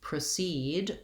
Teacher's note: So when I proceed with the explanation, my letter O says the vowel schwa.